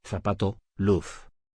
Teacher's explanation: Z, representa el sonido fricativo alveolar.